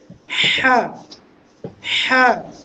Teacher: হা কোন জায়গা থেকে আসবে সেটা আমরা কন্ঠনালীর মধ্যখান থেকে